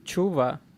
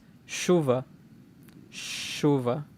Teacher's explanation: Este cambio de nuevo de la ch a una sh en sonido es un cambio bastante mundano